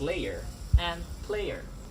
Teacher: a glide from one vowel to another and then to a third